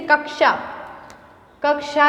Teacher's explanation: तो इसमें देखो 2 साउंड आ रहे हैं, क और श का आ रहा है. तो ये जो श है वो क और श से मिलके बना है. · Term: संयुक्त व्यंजन